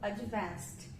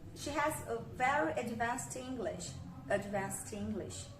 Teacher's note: E aí a gente fala advanced. E no som do schwa, o A é muito sutil, né? Quase a gente não consegue, né?